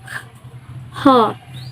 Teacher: voiceless glottal fricative